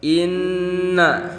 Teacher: Inna itu ditahan soalnya masuknya ke mannatahan ada Nun bertasydid jadi cara bacanya ditahan 3 ketukan